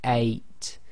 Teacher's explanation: A if you say eight but say it very slowly eight you should feel that your throat blocks a tiny bit right at the beginning that's known as the gloal stop so in Arabic that's represented